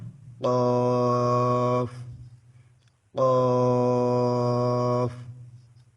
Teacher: জিবার গোড়া থেকে একটু আগে বাড়িয়ে তার বরাবর উপরে তালুর সঙ্গে লাগিয়ে ওখান থেকে কাফ উচ্চারিত হবে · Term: পাঁচ নাম্বার মাখরাজ